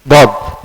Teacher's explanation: huruf dad dari pinggir lidah yang di dalam, bukan dari ujung lidah.